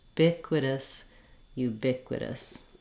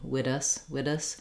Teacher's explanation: our last syllable has a flap t so when the t letter t is in between unstressed syllables